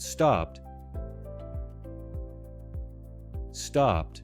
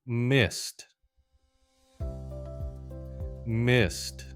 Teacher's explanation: the T sound, voiceless, one sharp beat, no extra syllable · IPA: /t/